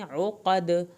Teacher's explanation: عقد قاف کو پر کر کے پڑھیں، دال کا کلکلا ہوگا آخر میں